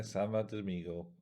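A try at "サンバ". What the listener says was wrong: It's Sanba. N for November. Mushroom Samba is the English, but Sanba is the Japanese.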